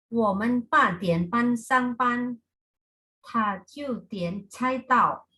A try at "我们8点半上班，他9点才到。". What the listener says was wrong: Oke, nah ada 1 ya Bu ya. Kayak pa, penarikannya datar dan panjang. Terus ta, boleh sekali lagi. 我们8点半上班，他9点才到。 8点半。Oke, 好，yang lainnya sudah oke.